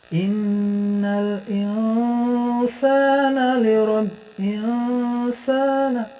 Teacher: lidah tuh nggak terlalu di-n-kan, nggak terlalu nempel ke langit-langit. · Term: samar